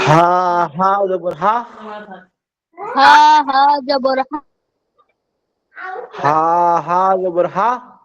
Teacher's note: হায়ের উচ্চারণটা গলা থেকে হবে এবং হায়ের উচ্চারণটা বলা যায় একটু কঠিনই